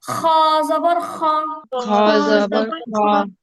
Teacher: আমাদের কণ্ঠনালীর উপরিভাগ থেকে খ উচ্চারণ হয়, খ। আর খ বলার সময় গলায় এক ধরনের খসখস আওয়াজ হয়।